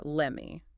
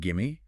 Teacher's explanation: When we use short commands or requests, the blending is incredibly fast, often merging the verb and the pronoun that immediately follows it